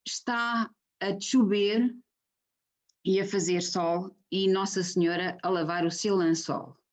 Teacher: O que acontece, este também é um traço dos dialetos do norte de Portugal. Nos casos em que nós escrevemos com CH, há esta pronúncia do tche. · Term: africada palatal